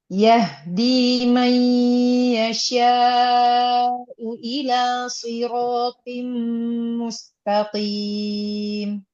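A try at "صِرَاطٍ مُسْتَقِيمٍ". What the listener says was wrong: Ya, siratim mustaqim. Coba to-nya lagi ditebalkan. Di tim. Tahan dulu, mimnya tasydid.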